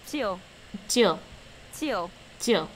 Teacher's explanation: Now it's falling tone.